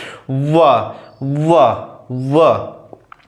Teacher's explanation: अब बात आती दंत और ओष्ठ से मिलकर बनने वाले, दंत और ओष्ठ को बोलते हैं दंतोष्ठ, दांत से और ओष्ठ से। अब बोलिए व क्या हो रहा है, दांत और ओष्ठ दोनों से हो रहा है, तो ये क्या कहलाते हैं, व क्या कहलाते हैं, दंत ओष्ठ।